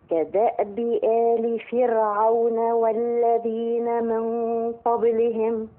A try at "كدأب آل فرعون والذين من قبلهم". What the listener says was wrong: راعي كسرة الميم.